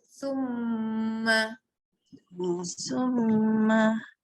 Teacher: tarik sedikit tekan pada hidung untuk bacaan dengung huruf mim.